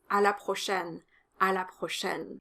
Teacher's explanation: the o is closed and the ai is an open a sound like in the word fair in english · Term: open E sound